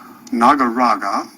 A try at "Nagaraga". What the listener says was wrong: You put the emphasis on the wrong syllable.